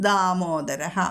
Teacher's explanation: എഴുതേണ്ട ആവശ്യമില്ല അപ്പൊ ദാമോദര എന്ന് തന്നെ ചൊല്ലിയാലും മതി ഹേതുർ ദാമോദരഹ വേണമെങ്കിൽ ഒരു ചെറുതായിട്ട് ഒന്ന് ബലം കൊടുത്താൽ മതി അധികം ധാ എന്ന് ഘോഷത്തിലേക്ക് പോകരുത്